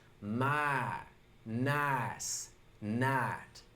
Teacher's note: I, my, night. Well, for a Southern accent, we cut off that second sound, which gives us my, nice, night. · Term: the I shift